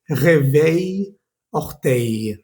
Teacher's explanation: No pronuncies esas L's al final